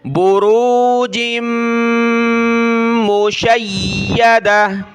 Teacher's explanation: جیم کو میم کے ساتھ ملایا، ناک میں آواز پیدا کریں گے یعنی غنہ ہوگا، میم کے اوپر یہ تشدید ہے.